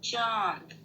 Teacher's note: जब हम बोलते हैं तो इसमें आवाज नाक और मुख दोनों से आती है। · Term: अनुनासिक